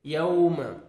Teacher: واو لین ہے، نرمی سے ادا کریں گے، واو پہ لپس کو راؤنڈ میں لے کے جائیں گے